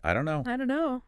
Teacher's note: You rarely hear the final T of don't pronounced clearly in fast speech. Right, it gets dropped. · The T is gone, the vowel's different, and don't and no link seamlessly together. · It often gets dropped, especially before a consonant like the N in no. And the vowel sound in don't, the O sound, often weakens, becoming less distinct.